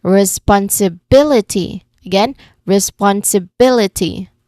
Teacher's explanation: the third syllable from the end is bill. And that's our stressed syllable.